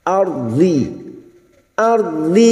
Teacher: lidah nempel pada gigi geraham atas boleh kiri boleh kanan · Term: huruf d